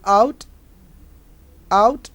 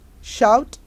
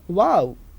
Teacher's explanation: When we produce the sound, જ્યારે આપણે આ સ્વરનો ઉપયોગ કરીએ છીએ, lips are neutral in the beginning and the rounded in the end